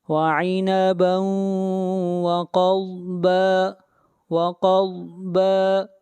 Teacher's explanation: سے واو ہے، یہاں پر ادغام مع الغنہ ہوگا، وعنبا وقضبا قاف اور ضاد یہ دونوں حروف مستعلیہ میں سے ہیں، دونوں کو موٹا پڑھا جائے گا